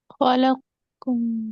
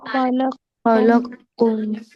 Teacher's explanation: खलक्कुम direct बारीक वाला काफ करेंगे, मोटा वाला काफ कॉफ ड्रॉप हो जाएगा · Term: इदगाम है कबीर